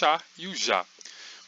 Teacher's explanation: esses dois sons são o que nós chamamos de plosivas africadas, que é uma mistura de dois sons, são dois sons feitos ao mesmo tempo. No caso do chá, é o som do tá e do chá feito ao mesmo tempo, e no caso do já, é o som do d e do já feito ao mesmo tempo.